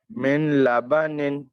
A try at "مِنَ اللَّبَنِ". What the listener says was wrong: من نہیں بولیں گے مل مل.